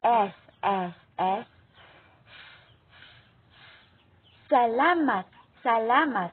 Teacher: Ang pangapat ay panggilagid. Ito ay ang ibabaw ng dulo ng dila ay lumalapit o dumidiit sa punong gilagid.